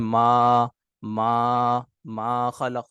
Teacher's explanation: تو منہ کے خالی حصے سے ادا ہوا، کہیں پر بھی جو ہے ہم نے نہ زبان لگائی، نہ دانتوں پہ زبان لگائی ، ٹھیک ہے، نہ دونوں دانتوں کو آپس میں ملایا، ٹھیک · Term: الف مدہ